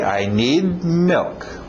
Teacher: Engole aquele D no final.